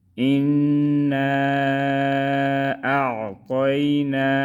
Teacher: حمزہ نون زیر ان، نون الف مد زبر نا، حمزہ عین زبر اع، طایا زبر طی، نون الف زبر نا، انا اعطینا۔ ان نون میں غنہ کریں گے اور مد کو 4 الف کے برابر پڑھیں گے